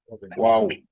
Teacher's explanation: ওয়াও উচ্চারণের সময় 2 ঠোঁট গোল হবে